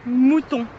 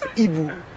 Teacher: dans mouton, le son résonne dans les cavités nasales, alors que pas dans hibou